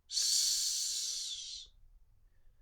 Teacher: Note that it's always devoiced, it's never pronounced as z. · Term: Icelandic S sound